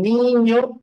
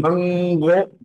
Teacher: en niño es alveolar pero en mango fíjate va la lengua mango ya no va hacia adelante no la lengua se ha contraído no es mango cuando ocurre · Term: n alveolar